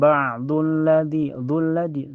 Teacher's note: Cara bacanya langsung masuk ke lam yang kedua ya. Jadi kalau ada lam bertasdid itu dianggap doba dianggap dua. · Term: alif lam asyamsiyah